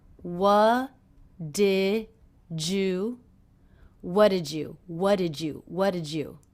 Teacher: the D and the Y here are combining to make the J sound